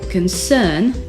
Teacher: le nom concern, l'inquiétude, est accentué sur la deuxième syllabe car la première syllabe est trop faible.